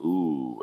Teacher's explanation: a long U class vowel would be like ooh, as in shoe